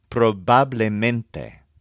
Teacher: In the case of probablemente, it might help to put a slight stress on bab and a strong stress on ment